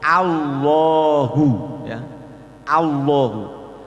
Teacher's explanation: lidah tetap harus nempel pada gusi karena asalnya kan lam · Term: tafkhim